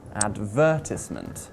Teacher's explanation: The word advertisement has 4 syllables, and we place the stress on syllable number 2, advertisement, not on syllable number 1, advertisement, or syllable number 3, advertisement.